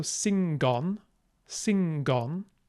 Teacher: remember to say that g sound it's not sing like Modern English with no G